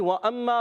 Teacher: واو کی ادائیگی ہوتی ہے ہونٹوں کی گولائی سے. دونوں ہونٹ جب گول کرتے ہیں تو ادا ہوتا ہے واو، اور واو پر زبر ہے، اس کو کھینچنا نہیں ہے.